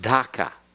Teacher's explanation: the D for Dhaka is a D that goes along the alveolar ridge, that ridge right behind your teeth